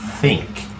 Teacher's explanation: observen la pronunciación de la th lengua entre los dientes